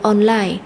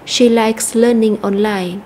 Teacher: Và từ online thì chúng ta sẽ nhấn mạnh vào âm tiết số 2